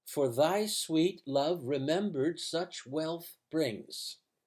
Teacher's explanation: you probably should stress such and sweet and wealth though they fall on the odd syllables